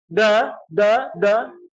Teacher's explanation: tidak keluar nafasnya atau anginnya berarti pelafalan kita sudah. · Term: huruf dal